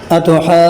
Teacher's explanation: یہاں دیکھیں دو جگہوں میں مد لازم ہوگا، ایک ہے اتحاجو کے اندر، پھر جونی کے اندر، دونوں میں مد لازم ہوگا. دونوں میں ایک میں الف مدہ کے بعد شد ہے، دوسرے یعنی جو کے اندر واو مدہ کے بعد شد ہے، دونوں میں مد لازم ہوگا